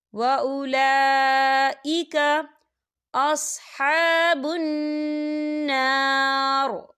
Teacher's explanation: لام کے اوپر کھڑی حرکات ہے اور اس پر مد بھی ہے، تو ہم اسے 4 حرکت کے برابر کھینچیں گے